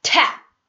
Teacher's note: P가 받침으로 쓰였을 때도 흡 하셔야지 tap 이러시면 안 된다는 얘기예요. 그냥 흡 하고 끝내셔야 돼요.